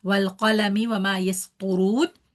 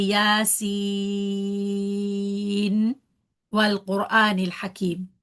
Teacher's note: We don't merge the noon sound into the next letter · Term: clear noon